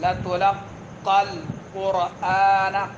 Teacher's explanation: پڑھنا ہے، دوسرا قاف بھی پر پڑھنا ہے، قاف کے اوپر پہلا قاف کے اوپر شد ہے تو شد والے حرف کو جلدی چھوڑنا نہیں ہے ، لَتُلَقَّى الْقُرْآنَ، قر، را کو پر پڑھنا ہے، آنا حمزہ